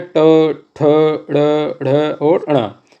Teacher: मूर्धन्य मतलब मुंह के भीतर ऊपरी छत का अगला भाग। ये जो अगला भाग है ये मूर्धन्य कहलाता है।